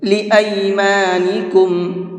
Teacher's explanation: اس لفظ کو ای پڑھنا ہے، اے نہیں پڑھنا ہے